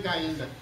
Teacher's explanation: La primera se llama debilitamiento de yod, y eso involucra a la Y y a la doble L